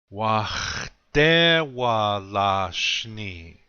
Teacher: the accent is going to be on the second syllable